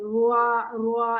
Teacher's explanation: इसमें आपके होंठ गोल हो रहे हैं